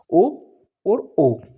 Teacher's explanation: कंठ की भी आवाज आ रही है। होठ की भी आ रही है। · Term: कंठोष्ठी व्यंजन, कंठोष्ठीय